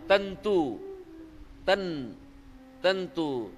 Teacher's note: म्हणून त्यांनी काय केलं तेवढी संधी केली नाही पण उच्चार मात्र पुढे त आल्यामुळे त वर्गाचा अनुनासिक काय आहे न म्हणून त्या अनुस्वाराचा उच्चार न होईल